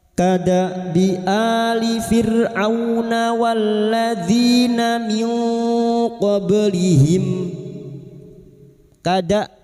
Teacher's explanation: Kada hamzah sukun. Huruf hamzah ini memiliki sifat jahar dan sidah. tertahannya nafas dan suara. Maka ketika sukun bunyinya, jangan dibaca kada, jangan tertukar ain.